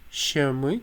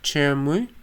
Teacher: you have the sh and it comes from ch